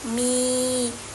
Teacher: Nah, itu termasuk ke hukum bacaan mad tabi'i, mad tabi'iyya yang dibaca 2 harokat